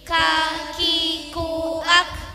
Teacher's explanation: Kaf, posisi dari pangkal lidah dan diucapkan dengan tipis. Mulut terbuka dan ada desisan sedikit.